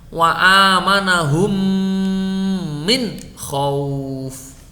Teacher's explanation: ketika membaca min itu tetap ada dengungnya, tetapi dengungnya ditekan